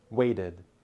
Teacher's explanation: waited ends with an extra syllable and the D sound